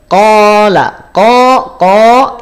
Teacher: dia tebal karena dia saat berharakat fathah bunyi vokalnya adalah bunyi vokal o bukan bunyi vokal a